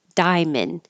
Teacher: We don't say the middle A as in diamond. Drop that A, make it shorter, and now you just have diamond.